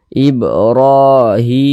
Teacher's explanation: berbentuk Alif kecil seperti ini maka huruf tersebut dibaca panjang sehingganya Hi dibaca panjang Mad thi'i panjangnya dua harakat